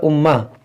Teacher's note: یہاں میم مشدد ہے اس میں غنہ کریں گے